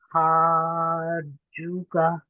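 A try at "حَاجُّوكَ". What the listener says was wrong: جو کو لمبا کریں اور لمبا کیجیے. اس کی اپنے ہا کی بھی پریکٹس کرنی ہے. ہا کہیں گے تو وہ دوسرا ہا بن جائے گا. ہا یہ اس کی ہمس جو ہے پہلے آتا ہے, ٹھیک ہے.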